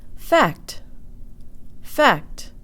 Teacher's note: in the English word fact the K sound almost disappears into the T